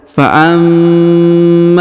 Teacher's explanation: Perhatikan huruf ma. Ini huruf ma ya, ditahan dan ditekan karena terdapat tanda tasdid. Lalu dipanjangkan 2 harokat karena di depannya terdapat alif.